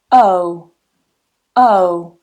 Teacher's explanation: the first one is a diphthong, meaning that it's basically two vowel sounds together in the same syllable, and we transition from one to the other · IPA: /əʊ/